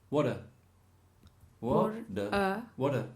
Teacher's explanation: no changes to a D it changes to a D and what happens to the ah it changes to a schwa